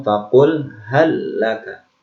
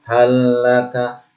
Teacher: Lam sukun bertemu dengan lam. Dimasukkan lam yang pertama ini ke huruf lam yang kedua. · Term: Idgham mutamatsilain